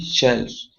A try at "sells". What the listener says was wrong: Sells. Yeah, don't forget there's no H there. sell.